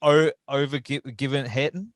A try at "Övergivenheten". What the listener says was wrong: We actually, the G is pronounced like a J, so Övergivenheten. Övergivenheten.